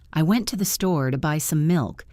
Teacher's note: You might not hear the to, the, or the some. You might hear, I went store, buy milk.